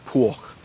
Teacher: if you go down to Bavaria, that B devoices to a P, and you have Puch.